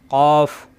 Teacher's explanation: কফ জিহ্বার গোড়া থেকে উচ্চারণ জিহ্বার গোড়া উপরের তালুতে চাপ দিয়ে